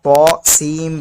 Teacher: यहाँ पर इदगाम होगा क्योंकि नून साकिन के बाद हुरूफ यनमलूना में से मीम आ रहा है इसलिए